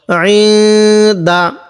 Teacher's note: এই নুন সাকিনের মধ্যে আমরা গুণনা করব কারণ নুন সাকিনের পরে দালটি হলো ইকফার হরফ